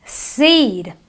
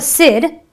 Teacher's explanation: we elongate the E so it is the long e sound